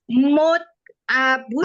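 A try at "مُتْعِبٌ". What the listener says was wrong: Kasroh dong isi file. Nah, mut'aibun.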